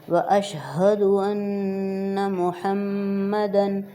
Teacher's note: نون پہ شد ہے غنہ کریں گے